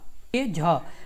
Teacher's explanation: झ तालव्य महाप्राण घोष व्यंजन का वर्ण है